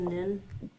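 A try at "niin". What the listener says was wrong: Oh, the double I's is a long E sound there.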